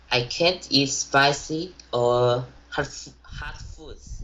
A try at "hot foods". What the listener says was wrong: So you are hearing yourself saying hard foods, right? You were able to mispronounce hot to hard foods.